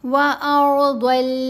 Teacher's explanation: ضاد کی آواز کی ادائیگی کے وقت ہم نے زبان کی رائٹ سائڈ کو، اپنی زبان کی جو سیدھی سائڈ ہے رائٹ سائڈ، اس کو رائٹ سائڈ کے اوپر والے دانتوں کے ساتھ لگانا ہے تو اس کی آواز بہتر پیدا ہوگی۔